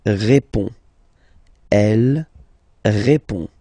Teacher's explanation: final D is not pronounced. You will only have this on nasal sound at the end. Répond.